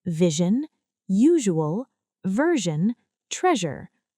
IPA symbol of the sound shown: ʒ